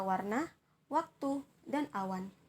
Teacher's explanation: w ini termasuk dalam bunyi labial bunyi semivokal dan termasuk dalam bunyi yang bersuara seperti kata warna waktu dan